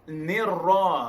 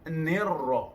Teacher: Nirra, jika dipangkatkan ar-ra alif lam syamsiyah juga atau idgham syamsi bila gunah. Nirra, ra bertasdid pakai dua kali, bunyi jelas dua kali, satu nir, satu ra.